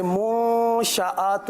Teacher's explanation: یہاں پر غنہ بھی کرنا ہے، پیش کے لیے ہونٹوں کو گول بھی کرنا ہے